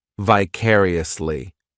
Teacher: This adverb has 5 syllables, and the stress is on that second syllable, vicariously. The third syllable, it's like that letter I just has that E sound, and the fourth syllable has the schwa